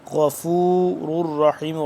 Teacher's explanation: غین موٹا، را یہ را دونوں موٹا، غفور الرحیم، را دو را پیش، را زبر را، غفور الرحیم۔